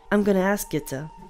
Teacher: Then, when she says you, it is shortened to ya. And the O at the end of to becomes a schwa and sounds like ta